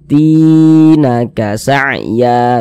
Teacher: Sehingganya ti kita baca panjang, mad tabi'i panjang 2 harokat